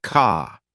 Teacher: British accent tends to soften the R, so car sounds more like ka.